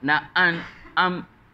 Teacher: hamzah pangkal halqum, ain tengah halqum